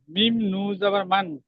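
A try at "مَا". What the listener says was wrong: নুনটাকে 3 আলিফ টান দিন।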